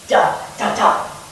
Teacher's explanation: If we believe the scholars, the basic metrical form of ancient Greek verse is the dactyl. 3 syllables in quantitative metrics, 1 long sound followed by 2 short sounds